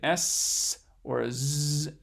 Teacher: if you make a partial closure what we call a fricative sound then you will make an s or z